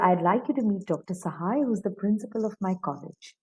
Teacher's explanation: So till Dr. Sahai, it will be rising and then the intonation will come down.